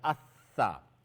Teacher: tip of the tongue from the top side of the tip when it touches the edges of your upper central incisor